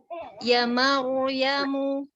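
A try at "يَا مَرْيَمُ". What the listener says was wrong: Iya-nya itu 2 harokat sepertinya Ibu di atas itu.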